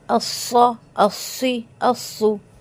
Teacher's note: सौद की सीटी मोटी होगी · صوت کی سیٹی موٹی ہوگی، جتنی باریک سیٹی سین کی تھی اتنی ہی موٹی سیٹی صوت کی ہوگی. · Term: मोटी सीटी